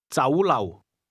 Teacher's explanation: The Cantonese word restaurant is pronounced with a combination of mid-rising and low-level tones.